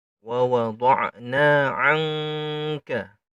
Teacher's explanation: Ada nun tidak bertanda bertemu dengan huruf kaf. Karena makhrajnya kaf ini di lidah bagian belakang, maka cara membacanya menjadi eng. Ya, ng. Wa wada'na 'anka.